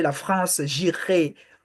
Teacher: The R in French, you pronounce it in the throat. The ah. So you say la France, j'irai.